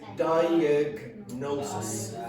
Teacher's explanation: so you must pronounce the G and then the N separately